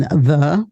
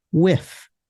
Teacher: these are the sounds that are produced by forcing air through the space between the tongue and the teeth · our primary dental fricative or fricatives are the voiced and voiceless TH sounds, as in the, which is voiced, and with, which is unvoiced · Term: dental fricatives